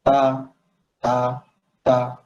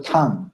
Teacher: চাইনিজরা হচ্ছে টি তা কখনো উচ্চারণ করতে পারে, তারা ডিটাকে তা উচ্চারণ করে এবং টিটাকে থা উচ্চারণ করে